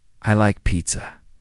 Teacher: Let your voice fall gently at the end.